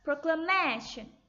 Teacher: Then before shun, we should stress man.